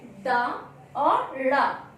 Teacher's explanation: उच्छिष्ट व्यंजन, क्योंकि जिह्वा तालु का स्पर्श करते हुए तत्काल नीचे गिरती है, इसलिए ये हुए उच्छिष्ट व्यंजन। · इनके उच्चारण में जीभ ऊपर उठकर नीचे झटके के साथ गिरती है